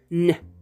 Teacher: Just like when you produce an M, which you do by blocking the airflow with both your lips, bilabial, m, or the N, which you do by blocking the airflow, pushing the tip of your tongue against the alveolar ridge behind the teeth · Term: nasal consonant